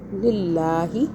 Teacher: اللہ باریک ہوگا کیونکہ اللہ سے پہلے زیر آ رہا ہے